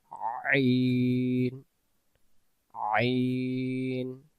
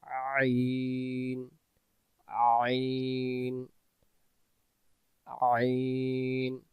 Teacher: ডাকি আইন অক্ষর গলা থেকে গলার চাপ থেকে একটু চেপে পড়বো আইন অক্ষর হলকের মধ্য থেকে একটু চেপে পড়তে হয়